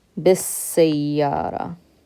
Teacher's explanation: we take the bi with a kasra, bi, and we just skip straight to that sin. Bis. Bi, ba with a kasra, and seen shadda.